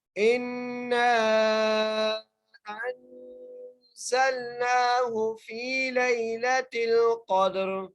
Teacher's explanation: حمزہ کو نون سے ملائیں گے اور نون پر غنہ کریں گے اور نون کو 3 الف کی مقدار کھینچ کر بھی پڑھیں گے